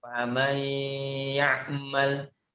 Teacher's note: tetapi dalam pembacaan kita memasukkan huruf nun ke huruf ya